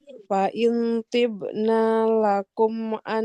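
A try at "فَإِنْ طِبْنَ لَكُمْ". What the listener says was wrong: Nunnya tidak panjang. Boleh diulang Ibu.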